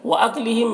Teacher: میم میں اظہار شفوی ہو رہا ہے، اسے جلد پڑھنا ہے